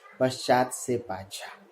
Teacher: च के पहले आधा स है, तो च ध्वनि अपनी दूसरी महाप्राण यानी छ में बदल जाएगी